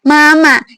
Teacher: Ini termasuk ke dalam bunyi nasal ya. Udara itu keluar dari rongga hidung, bukan dari rongga mulut.